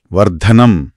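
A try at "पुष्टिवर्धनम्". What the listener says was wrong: ఇక్కడ ధా. దా కాదు, ధా. గాలి వస్తూ పలకాలి.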